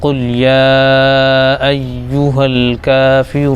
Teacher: واو ساکن ہے، را کے اوپر پیش ہے تو را کو واو میں ملائیں گے، اور دوسرا اس میں یہ ہے کہ واو مدہ ہو جائے گا وہ، تو قل یا ایوہا الکافرون۔ نون آیت کی وجہ سے ساکن ہو جائے گا تو یہاں پر مد عارض ہو جائے گا۔ مد عارض 1 الف 2 الف 3 الف بھی کھینچ سکتے ہیں